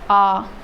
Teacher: अब विवित्र स्वर जो है सबसे ज़्यादा खुलता है।